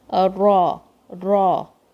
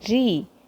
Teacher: If you say Ra, then it is heavy. If you say Ri, then it is light. And it has a trilling sound as well.